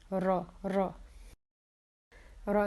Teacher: اس کی جو کوالٹی ہے وہ ہے اس میں وائبریشن ہوتی ہے، شیور ساؤنڈ ہوتی ہے، جیسے جس طرح سے بچے جب کھیلتے ہیں گاڑیوں کے ساتھ تو وہ ایک ورم کی سی وہ ساؤنڈ نکالتے ہیں، اس طرح کی ساؤنڈ نکالنی ہے.